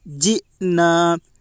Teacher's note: حمزہ کے اوپر جزم ہے، جزم والے حرف کو پیچھے والے حرف سے ملا کر پڑھیں۔ حمزہ ساکنہ کے پڑھنے میں جھٹکا ہوتا ہے